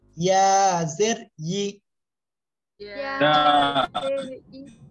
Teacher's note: জিবার মাঝখান উপরে তালুতে লেগে জাস্ট ছেড়ে দেবে